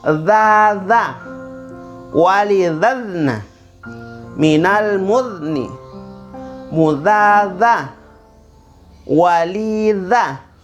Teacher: Ingati ujung lidah, nabrak gigi atas.